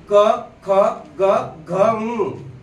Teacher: जीभ असे पाठीमागे घासते वरती कंठाला घासते क ख ग घं नासिकेतून याचा आवाज काढायचा मी ओठ मोकळे